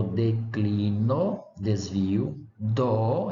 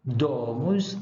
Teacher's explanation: a consoante D, que tem o valor de uma oclusiva dental sonora